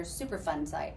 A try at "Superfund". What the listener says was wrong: It's not super fun. Put a D on it.